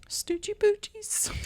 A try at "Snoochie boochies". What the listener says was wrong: What'd you say? It sounded like you said Stoochie with a T. Snooch. S-N. Snooch. Snoochie boochies.